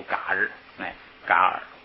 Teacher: ，拎包嘎尔给，拎包这个笨蛋的那个拎巴，你看左边跟他平着拎巴是一个枕包，还有的那个笨蛋拎巴是下边写住，这个大臣是上边哪弱，你这个慢慢可以对比记它。这个拎包呢，就是不是笨蛋是大臣啊。这个卡日是那个藏王派这个大臣到汉地来求文成公主的那个代表团团长啊，他非常聪明，这个叫卡日，这个译的叫噶尔， 因为它这个卡前边有前加字，所以不送气